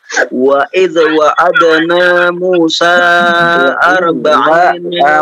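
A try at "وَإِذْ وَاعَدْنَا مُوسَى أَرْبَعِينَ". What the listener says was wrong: wawunya panjang juga, 2 harakat. Wawu 2 harakat. Wa idh wa'adni.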